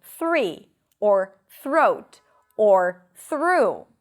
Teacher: For example, three, or throat, or through. So here you stick the tongue out for the TH and you pull it in for the R really quickly.